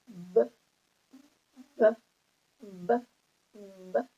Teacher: when we pronounce B, B, B, B, we can feel the movement, the vibration of the vocal cords